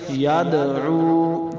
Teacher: دال حروف قلقلہ سے ہے، قلقلہ کریں گے